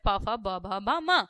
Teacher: प वर्ग का उच्चारण स्थान होता है ओष्ठ